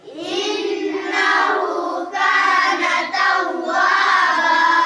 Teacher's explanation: نون کے اوپر تشدید ہے، اس لیے ایک الف کے برابر غنہ کر کے پڑھیں گے